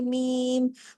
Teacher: آگے میم پر آپ دیکھیے تشدید ہے، ڈبل میم ہے، اور تشدید کی وجہ سے جب ہم لام کو کھینچتے کھینچتے جوڑیں گے تو میم کے ساتھ آواز وہیں جڑ جائے گی، اور پھر اس کے بعد میم کی آواز کو ہم مد کا حق ادا کریں گے، میم، پہلے لام میم اور پھر صاد، ٹھیک ہے؟